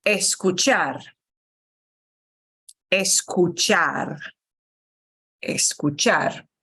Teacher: when we say the infinitive we always punch the end syllable